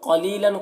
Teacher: قلیلاً قاف کو پر پڑھیں گے. تنوین کے بعد یہاں پر حمزہ ہے، حروف حلقے میں سے لن میں اظہار ہوگا